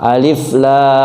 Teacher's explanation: Alif lamnya dibaca 6 ya. Mad lazim harfi musyba' disebutnya. Dibaca 6. Alif lam.